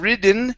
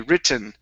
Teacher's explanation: So instead of ridden, okay, no D sound. It's T, written.